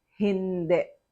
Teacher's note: the sound of I becomes the sound of the short letter E, which is if the I is in the last syllable